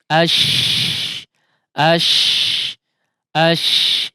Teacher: Namun intinya adalah ketika mengucapkan huruf shin dia keluar udara sangat deras ya. Di mulut ini keluar udara dengan sangat deras, bahkan ke seluruh mulut ya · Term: at-tafasyi